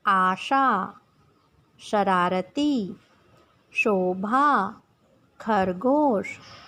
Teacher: तालव्य श, जब श का उच्चारण करते हैं तब जीभ तालु का स्पर्श करती है और इस श को तालव्य स कहते हैं।